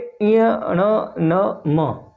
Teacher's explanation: नाक के सहयोग से बाहर निकलती है उसे हम नासिकी व्यंजन कहते हैं। जैसे नाक में से आ रही है आवाज ञ न म अगर हम न को बंद कर दें तो इनका उच्चारण सही तरीके से नहीं होगा। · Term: नासिकीय व्यंजन